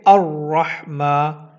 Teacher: الف کے اوپر زبر لگائیں گے اور اس کو پڑھیں گے الرحمہ، لام نہیں پڑھا جائے گا